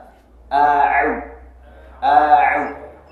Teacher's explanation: ain tenggorokan bagian tengah agak ke atas. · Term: huruf ain